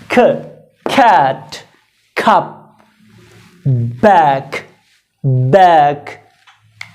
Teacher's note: English में 3 sounds को aspirated sounds कहा जाता है। उनमें आप थोड़ी सी पफ डालते हैं, एक्स्ट्रा जोर देके पढ़ते हैं।